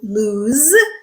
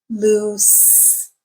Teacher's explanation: the same but the consonant sound at the end is different one is a voiced sound in lose and the other one is an unvoiced sound loose · the vowel sound is the same but the consonant sound at the end is different one is a voiced sound in lose and the other one is an unvoiced sound